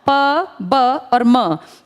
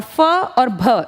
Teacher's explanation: प ब और म ये हो गए अल्प प्राण, और फ और भ ये हो गए महाप्राण